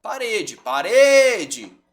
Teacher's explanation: a sílaba tônica é a penúltima não é a última é a penúltima é uma paroxítona também vocês vão perceber gente que a gente